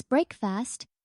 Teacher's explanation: Remember to stress the first syllable in breakfast. It's break fast, not break fast.